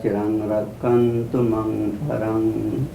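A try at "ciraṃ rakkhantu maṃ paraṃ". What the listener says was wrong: You have to say T. Without T, how do we know you're ending? Cirang mamparang.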